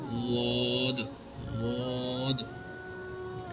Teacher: The Arab recite these the Arab read this word Dod, and the Imam Hafs read this Wad, Wad, and we will learn in the Hafs Qiraat, recitation of Hafs. Wad, the source of Wad is from the left side of tongue. When you touch the left side of tongue with the upper left side of teeth. مطلب کیا ہے کہ آپ جب بایاں آپ کا مطلب یہ ہے کہ جب آپ بائیں طرف سے بائیں زبان کے بائیں حصے کو آپ اوپر کی جو آپ کے بائیں طرف کے جو وہ ہیں دانت ہیں اس کے ساتھ جب ٹچ کریں گے تو یہ واد ادا ہوگا، واد.